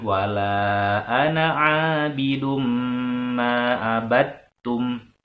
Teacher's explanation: karena ada mim bertasydid maka harus ditahan dulu ya